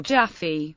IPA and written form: ˈdʒæfi (Jaffe)